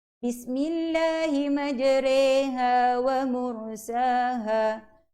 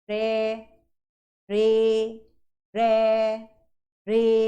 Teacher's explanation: Kat situ kena baca dua harakat. Re itu dibunyikan dengan kadar dua harakat. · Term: bacaan imalah